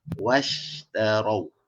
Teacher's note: Shin ni tak perlu moncong, tak perlu ni sebab dia bukan huruf bibir dia huruf lidah. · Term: huruf shin